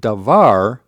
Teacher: But notice that the accent is lost. So with dvar we have the accent on the final syllable